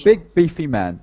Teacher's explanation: in this phrase you have to put the accent on the adjective